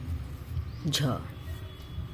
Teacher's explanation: तालव्य महाप्राण घोष व्यंजन वर्ण